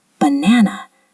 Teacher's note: The middle syllable is stressed.